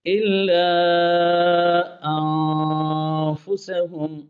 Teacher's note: نون پر اخفاء مع الغنہ ہے، ایک الف غنہ کرنا ہے، ہم کی میم پر اظہار شفوی ہے۔